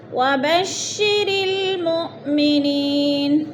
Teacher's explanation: حمزہ ساکنہ کو جھٹکا دے کر پڑھیں گے۔ نی پہ یا ساکن سے پہلے نون کے نیچے زیر ہے تو ادھر یا مدہ ہو رہا ہے۔